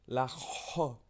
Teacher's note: la J, c'est mettre sa langue bien au fond de la gorge. La J. Comme si un peu tu t'étouffais, hein, on va dire ça un peu plus trash, c'est comme si tu t'étouffais.